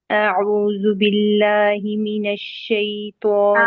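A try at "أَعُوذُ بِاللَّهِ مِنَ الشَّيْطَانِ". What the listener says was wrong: اعوذ باللہ نہیں، اعوذ باللہ کیا آپ نے ذال کی حرکت چھوٹی کر دی، یعنی ایک حرکت بھی نہیں پورا پڑا اس کو اور اختلاس ہو گیا۔ اعوذ باللہ،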